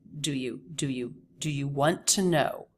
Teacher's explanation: he still stresses want and makes do you very fast